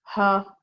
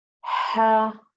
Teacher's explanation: you have to give it the running of breath of whispering sound